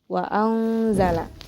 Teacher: nun sukun yang bertemu dengan huruf za sehingga cara bacanya pun samar disertai dengung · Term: ikhfa hakiki